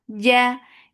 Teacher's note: no escape of breath or sound in jim. Jim is majhura letter for fatha upon your jaws.